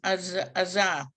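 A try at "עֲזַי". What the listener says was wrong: but there's a little yud, so it's zai.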